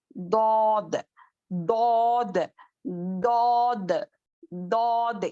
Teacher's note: اب دود بھی دیکھیں, دود کا جو مخرج کیا تھا زبان کے سائڈس, ہماری جڑ زبان کی جڑ جو پیچھے کا پارٹ ہے وہ اوپر کے داڑوں کو ٹچ کرنے سے دود کا مخرج ادا ہوتا ہے